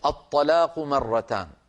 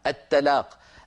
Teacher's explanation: الطاء مفخمة، لو رققناها تصير التلاق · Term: تفخيم